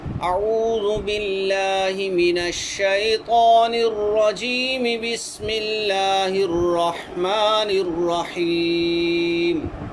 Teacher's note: رجیمی کا جو یا ہے اس کو میں نے نہیں کھینچا۔ وصل میں جو اول وصل اور دوم فصل ہوتا ہے، یعنی دوسرے کے اوپر میں نے جا کر وقف کر دیا ہے، تو اس میں جو ہے مد نہیں ہوتا، اس کو مد کھینچتے نہیں، مد جو ہے طویل نہیں کرتے، دوسرے کو وقف کر دیا۔